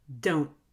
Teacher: You have to squeeze the muscles in your throat to cut off the air. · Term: held T